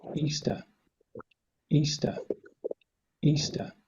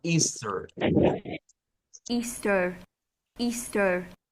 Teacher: tiene un sonido muy diferente, no está la R acá, termina en ishba. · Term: inglés británico